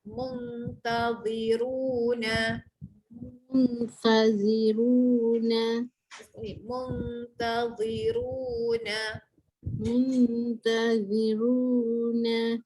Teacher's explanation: Datang ifah hakiki, dengung hujung lidah naik atas.